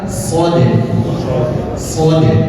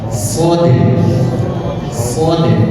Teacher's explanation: pangkal lidah agak terangkat jadi bunyinya agak bulat